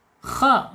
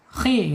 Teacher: kha ini makhrajnya ada di tenggorokan, awas.